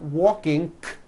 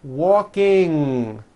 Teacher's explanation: I want you to realize that there is not a K sound. There is not a K sound. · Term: NG ending